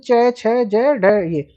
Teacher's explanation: इन व्यंजनों का उच्चारण करते समय, इन व्यंजनों को बोलते समय जीभ कठोर तालु को स्पर्श करती है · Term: तालव्य व्यंजन